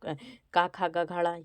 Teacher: क ख ग घड़ ये आपके कंठ से बोले जाते हैं